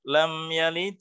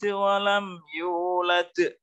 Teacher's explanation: lam yalid itu dalnya pantulannya lebih kecil daripada walam yulad